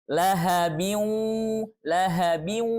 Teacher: Maka kita hukumkan bacaannya dengan hukum idgham bi gunnah. Cara membacanya adalah dengan cara dileburkan, ya, tanwinnya dileburkan ke wawu gitu. Dan menyisakan gunnahnya, ya, khaysyumnya, dengungnya.